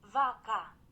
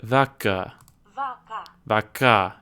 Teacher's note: So maybe this is an irregular, but when I put the cow, it totally got rid of that. vaca, It sounds like the emphasis is on the second syllable. That might just be a weird Google Translate thing, but vaca, vaca, vaca, and that's a different vowel sound too.